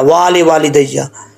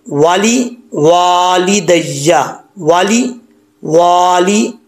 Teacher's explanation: पहले वाव को लंबा नहीं करना, दूसरे वाव को लंबा करना है